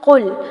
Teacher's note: قاف کو پر کرنا ہے، اس کو کاف نہیں بنانا